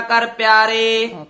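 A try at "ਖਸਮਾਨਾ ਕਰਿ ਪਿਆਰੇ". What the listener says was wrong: खसमाना पाठ इकट्ठा ही बोलना है, खसमाना कर प्यारे नहीं कहना, प्रभ जीओ इथे विश्राम है, खसमाना कर प्यारे। विश्राम ते रुकिया करना।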